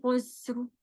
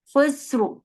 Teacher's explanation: خا ہیوی، سین سیدھا، پھر را ہیوی